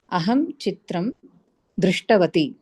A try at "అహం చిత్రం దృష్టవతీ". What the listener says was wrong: కొంచెం దీర్ఘంగా పలకండి చివరిలో, లేకపోతే మర్చిపోతాం. అదే హరస్వం రాసి తప్పు అవుతుంది.